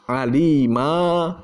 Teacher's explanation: kalau fathah tanwin alima, ya itu kalau diwakafkan berubah menjadi alif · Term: mad arid li sukun